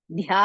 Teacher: to take the new breath and ಯು have to say ಧ್ಯಾ ಧ್ಯಾ ಇಸ್ ಮಹಾಪ್ರಾಣ ಅಂಡ್ ದೀರ್ಘ